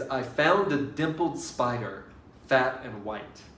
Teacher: dimpled has to be stressed on the first syllable